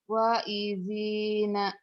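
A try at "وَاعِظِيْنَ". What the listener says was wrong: Wanya panjang ibu.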